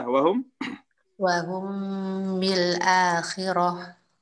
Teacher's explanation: Sedang cara membacanya adalah harus disertai gunnah dengung selama dua harokat dengan kadar dan bobot sentuhan di janur hidung atau al-haisum yang ringan.